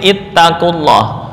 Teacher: Dalam hal ini huruf wawu mad gugur.